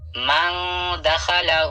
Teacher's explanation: ہا کے اوپر الٹا پیش ہے, الٹا پیش تھوڑا کھینچ کر پڑھا جاتا ہے واو مدہ کی جیسا